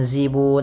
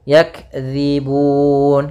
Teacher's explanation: nah seperti itu hati-hati dalam lafal dalal jangan zibun tapi dzi ujung lidah menempel dengan gigi seri atas kita atau kalau bisa kita gigit sedikit